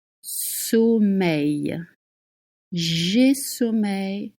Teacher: The sound at the end is Y, like in yes.